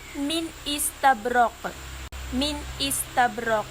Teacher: Cara mengizharkan nun sukun, menyatakan bacaan tanda sukunnya dengan hujung lidah diangkat menekan pada gusi depan sebelah atas makhraj huruf nun. Dan maksud tanpa dengung, sifat dengung nun sukun tidak disempurnakan, tidak diperpanjangkan sampai 2 harakat, hanya mengekalkan kadar sifat dengung yang sedia ada padanya.